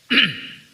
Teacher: diucapkan dengan menempelkan atau menyentuhkan ujung lidah dengan dinding dua gigi seri bagian atas tanpa dosis dan hampir sesuai perhatikan ini ada apa namanya ujung-ujung